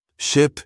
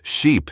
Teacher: pronouncing the short I in ship with a clipped voice, then stretching out sheep with the long E